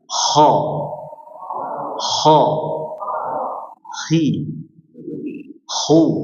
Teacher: Tapi itu hanya bahasa aja, bahasa ngorok dimudahkan dengan penyebutannya, yaitu huruf kha, huruf yang mengeluarkan suara ngorok, tapi bukan ngorok yang asli ya. Ngorok yang rihuha atau anginnya itu tipis.